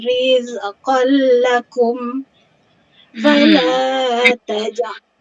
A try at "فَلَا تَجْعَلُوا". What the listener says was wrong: La tak panjang, 2 je.